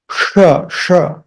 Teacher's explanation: This you are twisting your tongue upwards. Retroflex.